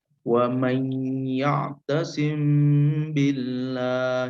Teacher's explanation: jadi cara membacanya disamarkan dan ada getaran diantara dua bibir kita kemudian mendengung nya mendengung itu kemarin kalau kita simbolkan yaitu keluarnya uu eh dari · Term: Ikhfa Syafawi